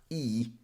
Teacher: Then we're going to go to the E sound. This is a tense sound. The tongue goes up